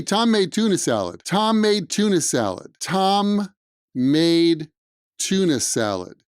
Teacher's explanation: there's two m's together and those are gonna blend to one sound tom maid comes out like tom made tom made tom made